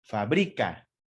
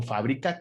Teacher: la sílaba tónica debe de ir en la antepenúltima sílaba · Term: palabra esdrújula